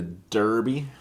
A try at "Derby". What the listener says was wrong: Darby. It's spelled D-E-R, but it's pronounced D-A-R.